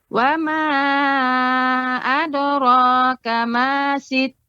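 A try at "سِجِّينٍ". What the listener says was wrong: Ya, untuk jim ya, si jin dia tidak terlalu terlalu menekan kuat si jin. Nah, ini terlalu pengucapan jin ya. Dia si jin.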